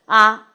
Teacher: 零声母也就是说它前面呢基本上是没有辅音的 ，所以呢如果我们是拟影母，我们就把它当零声母，那就是啊。但是有学者比如说李方贵先生啊，还有就是国外的Baxter，▁也就是他的中国名字叫白一平等等学者，他们认为可能中古时期的这个影母啊，它是有一个喉塞音，也就是一个轻的喉塞音，这个喉塞音用国际音标呢是写成这个。那么如果是影母，我们读加上呼读音读影母的话呢，我们可以读成是啊。那么